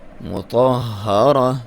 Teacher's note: ہا کے اوپر شد ہے, اس کو دبا کے پڑھیں گے